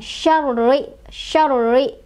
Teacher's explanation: Ra-nya bertasydid lagi, jadi kita agak tekan